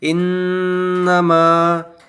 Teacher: یہاں نون کے اوپر تشدید ہے، اس وجہ سے یہاں اس نون کے اوپر 1 الف کے برابر ناک میں آواز چھپائیں گے ، یعنی گننا کریں گے، اور یہاں میم کے اوپر مد